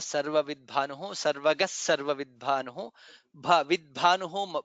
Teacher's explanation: bha is mahaprana there